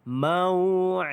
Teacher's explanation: Di sini dia satu sahaja mad, iaitu bukan mad, idgham izhar syafawi, iaitu mim mati bertemu dengan ya, izhar syafawi, maka bacaan di sini ada jelas, tidak ada dengung